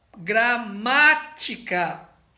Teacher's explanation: é a mais forte a antepenúltima sílaba é mais forte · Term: proparoxítona